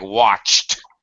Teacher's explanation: we want to go from the unvoiced ch to the unvoiced t